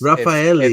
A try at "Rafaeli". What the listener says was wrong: You always want to say those R's, but she's Brazilian, so it's Rafaeli.